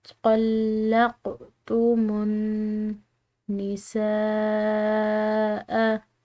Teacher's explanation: طلقتم، یہاں پر نون مشدد آ رہا ہے، مشدد نون پر غنہ کیا جاتا ہے تو یہاں پر بھی ہم غنہ کریں گے، اور اس کے بعد سین کے بعد آنے والی جو الف ہے اس کے اوپر بڑی مد ہے جس کی وجہ سے ہم اس کو 3 الف کی مقدار کھینچ کر ادا کریں گے